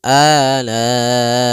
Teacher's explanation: pada lafal la'i di sini ada mad wajib muttasil, yaitu adanya mad tabi'i bertemu hamzah pada satu kata, atau adanya huruf hamzah yang datang setelah huruf mad ditandai dengan tanda baca seperti ini.